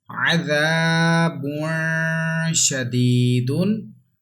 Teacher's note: There is ya madda, and we have to stretch equal to 1 alif.